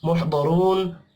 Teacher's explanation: दौद हुरूफ मुस्तअलिया है, पुर पढ़ेंगे। रॉ को भी पेश की वजह से पुर पढ़ना है।